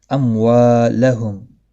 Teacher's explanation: میم ساکن کے بعد واو ہے، اظہار شفوی ہوگا، گنہ نہیں ہوگا۔ وا الف مدہ ہے، ایک الف کے برابر کھینچ کر پڑھیں گے۔